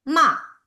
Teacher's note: And the fourth tone, it's falling downhill tone.